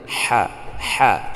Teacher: Tidak kita harus tahan dulu seperti a. Kalau a kan tertahan dulu saat kita baca. Kalau ha tidak, langsung dilepaskan. Lunak, lembut dia itu. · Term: rakhawah